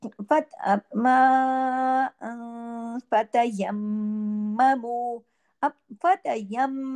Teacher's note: आवाज थोड़ी इज़हार के साथ नहीं बल्कि थोड़ी थोड़ी नाक में थोड़ी बाहर ठीक है फत यम अब फत यम मीम पे यहां पे गु्ना होगा क्यों यहां दो मीम है मीम पे तशदीद है